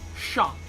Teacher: the way you say 上, your mouth kind of brings it out from the back of your mouth